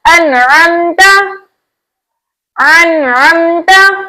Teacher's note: नून साकिन के बाद हुरूफ हल्की में से आइन आया तो हमने नून साकिन को इसके मखरज और सिफात के साथ खूब जाहिर करके पढ़ा।